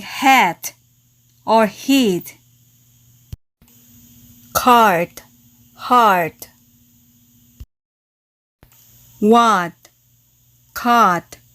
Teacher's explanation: In American English, the Americans tend to drop the T in the final position.